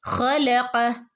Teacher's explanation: ഹ തൊണ്ടയുടെ മുകൾ ഭാഗത്തുനിന്നും വരുന്ന ലെറ്റർ ആണ് ഹ